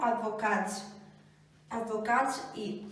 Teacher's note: En aquest refrany trobem una sonorització en advocats perquè està la TS, el fonema TS, està enmig de dos vocals, de la A i la I, i les vocals són sempre sonores. Al estar enmig de dos sonores es sonoritza i seria advocats, advocats i.